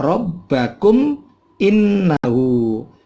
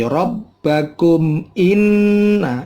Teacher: Bunyi mim matinya jangan lama, tetapi langsung begitu 2 bibir ketemu, langsung lepas lagi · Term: idhar syafawi